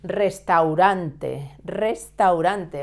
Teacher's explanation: restaurante, with a double R sound at the beginning and a soft R sound in the second